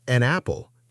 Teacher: connecting the n sound to the vowel